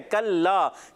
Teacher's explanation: काफ का मखरज ज़बान की जड़ और तालु का सख्त हिस्सा याद रखना है।